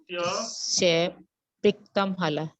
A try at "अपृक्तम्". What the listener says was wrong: स्यापृक्तम, स्य अपृक्तम है, वहां पे पृक्तम नहीं है, अपृक्तम है, अपृक्तम हल, वही तो बात है।